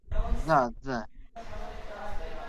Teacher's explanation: জিহ্বার আগা এবং সামনে উপরের দুই দাঁতের আগার সাথে থেকে জাল উচ্চারিত হয়। তো হালকাভাবে জিহ্বার আগাটি এই সামনে দুটো বড় দাঁতের সাথে হালকাভাবে ঠেকাবেন।